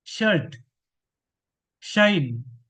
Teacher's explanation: Voiceless post alveolar fricative sound